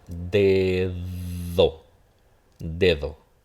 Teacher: Esta de aquí sí va a sonar, la primera, va a sonar como una oclusiva.